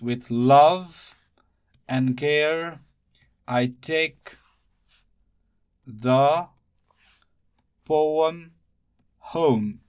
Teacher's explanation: This is a valley, while this is the crest. So it goes up and down, up and down, up and down. It is unstressed syllable followed by a stressed one. That's why it is called iamb.